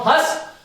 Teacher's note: अनुस्वार का उच्चारण स्थल जो है वो केवल नासिका है। अनुस्वार नासिका से बोला जाता है।